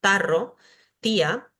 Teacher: cuando decimos tarro, tía, siempre tenemos la lengua hacia los dientes, entonces nos resulta fácil decir ta. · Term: dentales